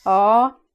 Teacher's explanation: if you do it with a rising tone then it sort of means no